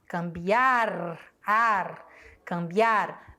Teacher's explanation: Cambiar, a sílaba tônica é o biar, porém, ela não vai ser acentuada porque ela termina em R e a regra diz que se terminar em R, não é acentuada.